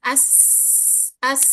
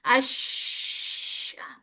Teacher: Sin dia sofir, jelas. Apa sih desis, berdesis. Desisnya itu jelas. As as itu kalau sin.